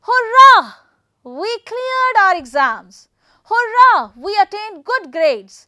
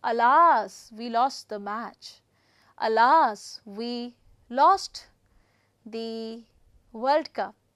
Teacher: raising the pitch for excitement and lowering it for seriousness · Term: intonation